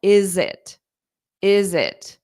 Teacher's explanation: when I say is it I pronounce that t more sharply because it's the last sound